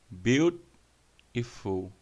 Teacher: O T entre vogais, não acentuado, soa como R.